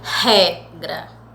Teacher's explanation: Esse ré, eu coloco uma maior tonicidade, uma maior força para me pronunciar. Então, esse ré é a penúltima, porque gra é a última, ré penúltima. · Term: paroxítona